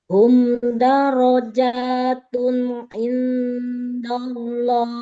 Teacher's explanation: rnya ditebalkan ya ro fathahnya